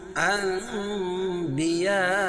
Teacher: نون کی آواز کو میم سے بدل کر غنہ اور اخفا کے ساتھ پڑھیں گے اور اس کو اقلاب کرتے ہیں۔